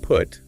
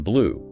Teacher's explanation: biggest difference is the length but there's also a subtle change in how much you round your lips